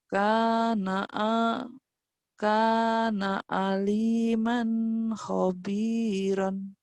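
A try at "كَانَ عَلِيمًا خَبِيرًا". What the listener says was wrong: Mannya idhar dilepas, jangan ditahan. Kana aliman. Disentak ya, latihannya tapi. Tapi kalau udah bagus nggak boleh disentak, cukup gini. Kana aliman khobiran. Jadi pisah ya. Nggak ketahan. Ini idhar ya.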